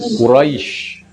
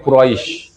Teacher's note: Kalau Quraisyin itu berarti dilanjut. Kalau berhenti berarti Quraisy.